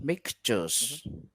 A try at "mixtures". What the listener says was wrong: Mixtures. I like that.